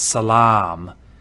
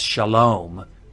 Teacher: if you know the Arabic word for peace it's Salam and that long ah in Arabic is now an o in Hebrew